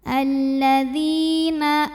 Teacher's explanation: Karena ya sukun sebelumnya kasrah, maka dzal panjang 2 harokat. Alladzina, a mad badal karena ada hamzah yang dipanjangkan, maka a-nya ini panjangkan 2 harokat.